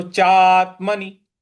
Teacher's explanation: चा के बाद जो आधा त है उस पर हमको आघात देना थोड़ा सा बल लगाना है और न के पहले न के ऊपर जो है छोटी इ